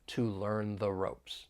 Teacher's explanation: we're going to use that weak the because the next word begins with a consonant sound